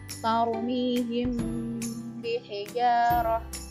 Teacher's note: Sebabnya ada mim sukun bertemu dengan huruf ba. Cara membacanya dibaca samar-samar disertai dengan dengung 2 harokat. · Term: ikhfa syafawi